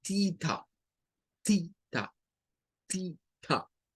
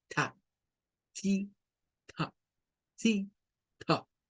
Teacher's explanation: Nótese que esta TH, la lengua se asoma hacia afuera. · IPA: /θ/